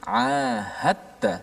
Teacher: dal itu dimasukkan secara totally dalam ta. Sebab tu ada sabdu di atas ta dan tidak ada apa-apa tanda di atas dal. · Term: idgham